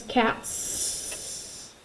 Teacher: Put your hand on your throat and say t, t, t. Is T voiced or unvoiced? It's unvoiced. So cat becomes cats.